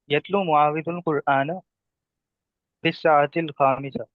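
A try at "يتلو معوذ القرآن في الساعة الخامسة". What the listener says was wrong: जी माशाल्लाह।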